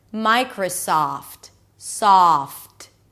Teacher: micro, and then soft. An S sound, the ah as in father, and then ft at the end.